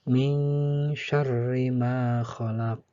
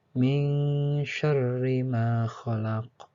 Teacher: ada hukum nun mati bertemu huruf shin. Dalam ilmu tajwid disebut dengan ikhfa, artinya samar-samar.